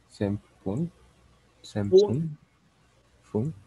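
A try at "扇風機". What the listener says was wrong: Pero no hay, no hay N adelante. Senpuki. Senpuki. Con un alargamiento de la U.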